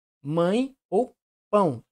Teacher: o ar passa tanto pela cavidade bucal quanto pela cavidade nasal E provoca esse som anasalado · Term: ditongo nasal